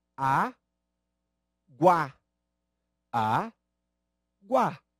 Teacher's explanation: Há 2 sons. Só que na última sílaba, nós percebemos exatamente o encontro de uma semivogal e de 1 vogal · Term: ditongo